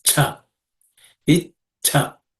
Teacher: This Cha is also aspirated because that's the second letter in the Cha varga.